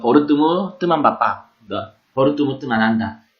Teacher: 근데 뜨만의 이는 으로 들리는데 예를 들어 버릇뜨무 뜨만 바빠, 버릇뜨무 뜨만 한다, 너의 친구를 만난다 라는 뜻으로 했을 때 버르 같은 경우에는 B, E, R인데도 어로 발음이 되고 뜨만은 T, E, M인데 으로 발음이 됩니다.